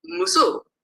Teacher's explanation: in this language, a low tone marks the definite · Musu, you add a low tone, you get musu, and it means the woman. So in this case, the low tone means the definite.